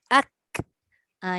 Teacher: dia punya sebutan tu dia nipis sikit berbanding dengan qaf